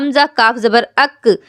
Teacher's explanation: आप फ़ौरन महसूस करेंगी कि ज़ुबान तालू के सख्त हिस्से में टच हुई है